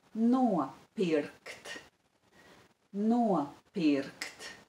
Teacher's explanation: There is the diphthong o in the first syllable.